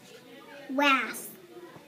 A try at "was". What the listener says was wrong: Was isn't a real word. I know it's an A in the middle, but it doesn't sound like an A.